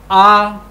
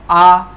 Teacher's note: जिह्वा का पिछला वाला हिस्सा सक्रिय है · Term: पश्च स्वर